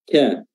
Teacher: harus dikeluarkan nafasnya, dikeluarkan udaranya pada saat penyebutannya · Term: sifat hams